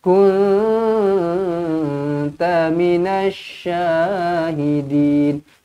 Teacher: Minash alif lam syamsiyah, terus masukkan sabdu, jangan baca dengan minal.